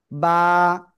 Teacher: দুই ঠোঁটের ভিজা অংশ থেকে বা অক্ষরটা উচ্চারণ হবে